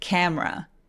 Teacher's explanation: M에서 R로 바로 넘어가는 거예요.